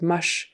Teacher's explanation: she didn't get the CH sound at the end of much she said mush uh more like a mesh so it's an sh kind of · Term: sh kind of a sound